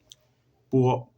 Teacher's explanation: Puo, sonido no aspirado, suena como una P en el español. Es parecido, por ejemplo, a decir papá o papa, ¿sí?